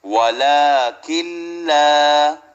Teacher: lam is one of the idgham letter where you don't do gunna, you just join them but don't do gunna. Lam and ra without gunna, and ya mim waw noon with gunna. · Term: idgham bila gunna